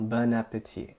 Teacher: when you get the liaison with the word bon, it's not nasal anymore.